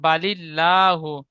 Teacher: আল্লাহ শব্দের ডান দিকে জের এসেছে, আল্লাহ লামকে বারিক অর্থাৎ লা পড়তে হবে।